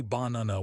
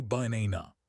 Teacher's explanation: The first and last a are schwas. They are dead vowels. If you pronounce them clearly, baana, you sound foreign.